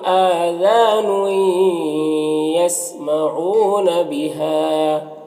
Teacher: حمزہ میں کھڑا زبر ہے جو الف مدہ کی طرح ہوتا ہے